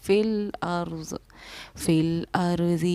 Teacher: را کو موٹا پڑھا منہ بھر کے